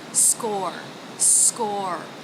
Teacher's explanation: S consonant cluster SK the a as in law vowel followed by the r consonant